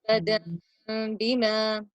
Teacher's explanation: Enough gap should be open between your lips that as a paper can pass through your lips. So a very, very small opening is left when you are changing the noon sound to a meme sound and merging the meme with the ba sound.